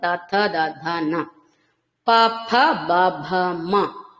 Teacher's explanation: సహాయంతో పలుకుతున్నాం త థ ద ధ న ఇవన్నీ కూడా దంతవ్యాలు అన్నమాట ప్రతిదీ మనం దంత వరస తో సహాయంతో పలుకుతున్నాం కాబట్టి దంతవ్యాలు అంటాం · దంత వరస తో సహాయంతో పలుకుతున్నాం కాబట్టి దంతవ్యాలు అంటాం తథ ద ధన ప భ మ పెదవుల సహాయంతో పలుకుతున్నాం కాబట్టి ఓష్టవ్యములు ఓష్టము అంటే పెదవి కాబట్టి సంస్కృతంలో ఓష్టవ్యములు అంటారు ఇలా వాటి వాటి ఉచ్చారణ